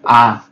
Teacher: নিচের দিক থেকে আছে, এজন্য এটাকে বলা হয় নিম্ন বা বিবৃত।